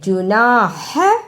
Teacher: ہا کو ادا کرنے کا طریقہ حلق سے آواز کو رگڑ کر نکالنا ہے